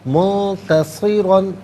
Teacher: منتصرا میں نون ساکن اس کے بعد تا حرف اخفا ہے، تو نون ساکن کو اخفا کے ساتھ پڑھیں گے. را پر دو زبر کی تنوین، اسے پر کر کے پڑھیں گے. منتصرا اور وقف کریں گے تو منتصرا پڑھیں گے کہ دو زبر کی تنوین وقف میں الف سے چینج ہو جاتی ہے.